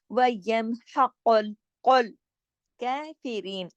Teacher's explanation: वयम हा गले से, और फिर कॉफ जो है ये मोटा काफ है, ठीक है। वयम हक़ुल कुल कैफिरीन, अगला काफ जो है वो बारीक का, उसको बारीक करना, दोनों को एक जैसा नहीं पढ़ना, ठीक है।